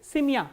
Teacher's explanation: ye sound becomes e when it is not stressed